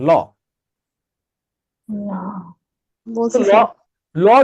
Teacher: এই যে আপনার জিহবার দুই পাশে যে ব্ল্যাঙ্ক স্পেস এই ব্ল্যাঙ্ক স্পেস থেকে আপনি বাতাসকে বের হইতেও দিচ্ছেন।